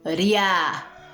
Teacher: O I, ele é mais fraco, ou seja, ele é átono. A, ó, ria. E o A é mais forte. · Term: semivogal